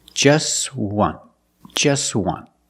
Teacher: We see the T is between consonants, so it's silent. Link the sounds together.